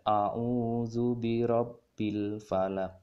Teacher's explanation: ada huruf qaf yang diberhentikan dengan tanda waqaf itu disebut dengan hukum tajwid Qalqalah Kubro jadi membacanya dengan mantul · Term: qalqalah kubra